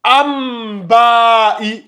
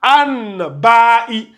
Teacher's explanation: Voilà, voyez-vous, c'est comme si on a on a fait un changement, on a sorti le noun, on a fait rentrer le mim. Donc cette fois-ci, au lieu de an, ça va devenir am comme ça. Maintenant, ça se lit amba.